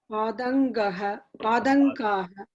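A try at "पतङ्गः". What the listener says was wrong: Not Padanga, it is Patangaha. Patangaha. Not Padangaha. Don't make it da. It is not da. It is ta. Patangaha.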